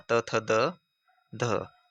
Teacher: ध का उच्चारण स्थान दंत्य